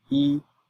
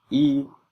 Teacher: the character y meaning one is the first tone when alone second tone when followed by a fourth tone and fourth tone when followed by another tone.